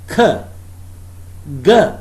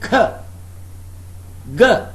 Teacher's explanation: Now you can detect that they are not nasal sounds. We cannot feel air stream through the nostrils.